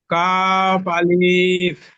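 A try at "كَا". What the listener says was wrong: না, আলিফের টান নেই, কাফকে টান দেন, আলিফকে তাড়াতাড়ি পড়েন। কাফ আলিফ।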